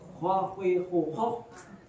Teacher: karakternya adalah tafkhim. Jadi harus mencucu atau monyong dia di sana. Nggak boleh sambil meringis. Kalau meringis nggak mungkin.